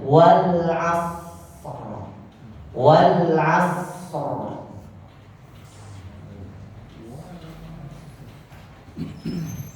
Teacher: shad berikan dulu dia karena dia punya sifat hamas, maka berikan desisnya